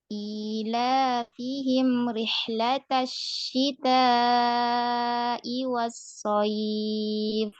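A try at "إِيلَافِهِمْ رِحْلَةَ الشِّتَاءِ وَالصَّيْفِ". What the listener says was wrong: Dialirkan lagi sukunnya. Dialirkan lagi. Agak panjang lagi ya. Kedua. Rihlata itu ya. Rihlata syita. Nah, kemudian mimnya itu dialirkan juga ukti. Dikit lagi alirannya ya. Jangan cuma ilafihim rih. Jadi disempurnakan, dialirkan dulu. Ilafihim rihlatasyita fihim rihlatasyita. Jadi karena dia ada gunnah ya, ada gunnah dia agak panjang. Jadi dialirkan ya. Fihim ya, sampai kerasa gunnahnya ya, sampai kerasa.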